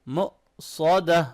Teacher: یہاں پر حمزہ ساکن ہے تو حمزہ ساکن پہ ہم لوگ کیا کرتے ہیں، جھٹکا دے کے پڑھتے ہیں، ایسے جرکنگ ساؤنڈ کے ساتھ پڑھیں گے، ٹھیک ہے۔ مؤصدہ، صاد کو موٹا پڑھیں گے اور آخر میں ہا کو کلیئرلی پڑھنا ہے